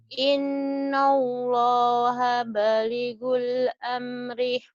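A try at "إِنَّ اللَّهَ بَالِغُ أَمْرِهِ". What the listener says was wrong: innallaha baligu amri. Banyak panjang. Jangan baligul. Innallaha balighu amri. Lo-nya panjang.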